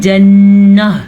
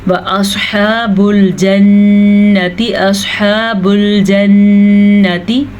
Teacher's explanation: यहाँ पे हमने वक्फ कर लिया, इसलिए हमने इसको जन्नह पढ़ा, गोलता हा बन जाती है। लेकिन यहाँ पे वक्फ है ही नहीं तो हम इसको ता ही पढ़ेंगे।